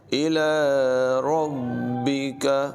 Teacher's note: لام پر کھڑی حرکت سے لمبا کریں گے، را کو پر ادا کریں گے، اور با میں جماؤ کے ساتھ ادائیگی ہوگی، کاف کی آواز بریک ہوگی۔